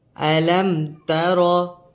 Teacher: پیارے ناظرین، یہاں پر اظہار شفوی ہو رہا ہے تو یہاں پر غنہ نہیں کریں گے۔ میم ساکن کے بعد حرف با اور میم کے علاوہ کوئی حرف آ رہا ہے، یہاں پر تا آ رہا ہے تو اس میں غنہ نہیں کریں گے۔